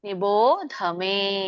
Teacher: ನಿಬೋಧ ಮಾತ್ರ ಮಹಾಪ್ರಾಣ ಇದೆ